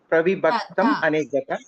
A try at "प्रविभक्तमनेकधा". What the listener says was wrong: Aneka kakara. Ka dha. Ta nasti. Mahaprana dha. Alpaprana dha janate kila. Tadavariti Mahaprana dha.